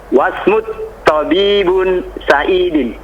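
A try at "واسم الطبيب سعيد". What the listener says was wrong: Wasmut tabibi. Dikasih harokat. Wasmut tabibi dikasrah Sa'idun. Bukan Sa'idin.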